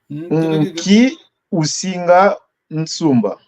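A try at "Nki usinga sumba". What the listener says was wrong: Attention la nasale. On n'a pas la nasale. Sumba, on n'a pas N avant S.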